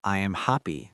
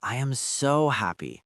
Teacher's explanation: Say, I am so happy. Put the stress on the word so to carry the weight of the emotion.